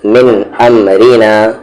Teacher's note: را یہاں پر لائٹ ہے کیونکہ اس کی آواز نیچے ہے